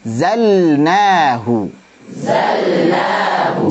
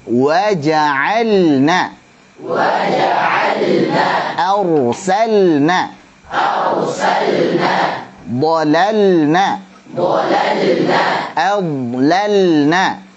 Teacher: Ini lamnya harus jelas. Sedikit memang antum tekan supaya jelas lamnya karena lam dan nun ini makhrajnya berdekatan. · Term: lam sukun pada fiil